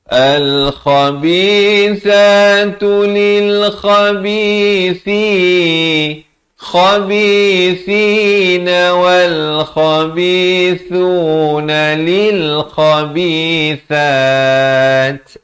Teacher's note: Ada bunyi hamas. Sa di hujung lidah. Ya. Dan wakafkan sekurang-kurang 2 harakat dan diberikan bunyi hamasnya itu.